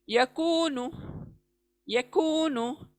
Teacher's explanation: कू खींचना है, वाव मद्दा आया है